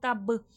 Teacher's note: با میں خلخلے کی صفات واضح ہوگی آواز پلٹ کر سنائی دے گی